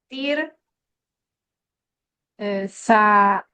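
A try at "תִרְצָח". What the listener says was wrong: No, tirsach. Tirsach. Because there's no aleph or ayin to separate it. Tirsach. Yeah, it's over here. That patak is here, not here. Tirsach.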